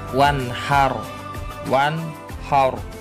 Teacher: Cara membacanya yaitu wajib terang atau jelas, tidak boleh mendengung. Jadi bacanya itu jelas, tidak boleh berdengung. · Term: idhar halki